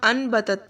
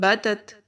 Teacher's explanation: نون کی آواز کو میم کے ساتھ بدل دیں گے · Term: اقلاب